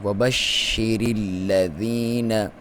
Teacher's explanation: را کو باریک پڑھیں گے کیونکہ اس کے نیچے زیر ہے، اور اس کو ملائیں گے لام کے ساتھ کیونکہ اس کے اوپر شد ہے۔